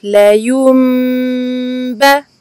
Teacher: on fait attention à remplacer le nun sakin par un mim. Donc comme on a vu dans les mots précédents, donc le nun rouge fait place au mim qui est au-dessus de lui. · Sachez que le terme le plus approprié et le terme originel est al-qalb, donc la substitution en français du nun par un mim. Ensuite, tâchez de donner une durée longue à la runna ici, du mim suivi d'un ba